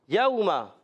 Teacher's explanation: यौमा वाउलीन है, वाउ साकिन से पहले ज़बर, वाउलीन नरमी से अदा करेंगे।